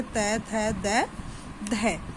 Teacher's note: इन व्यंजनों के उच्चारण में जीभ की नोक दांतों को स्पर्श करती है। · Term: दंतव्य